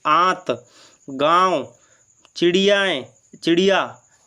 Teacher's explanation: उसमें क्या हो रहा था अनुस्वार में कि नाक से अधिक सांस निकल रही थी, और इसमें क्या हो रहा है कि नाक से कम सांस निकल रही है और मुख से अधिक सांस निकल रही है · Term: अनुनासिक